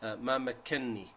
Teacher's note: the noon of ma makkanni is actually originally two noons, which is ma makkanani.